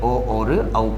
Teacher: कंठ और ओष्ठ ये दोनों मिलकर किसका उच्चारण करते हैं, ओ और औ का उच्चारण करते हैं। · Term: कंठोष्ठ